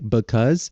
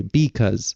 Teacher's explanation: Chicano English tends to not reduce vowels, which basically just means that they fully pronounce vowels.